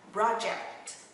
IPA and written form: ˈprɑː.dʒekt (project)